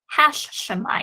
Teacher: you can hear the doubling of the sheen there when i say that